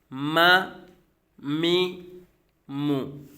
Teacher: मीम दोनों होंठों के खुश्क हिस्सा से अदा होता है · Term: हरूफ शफविया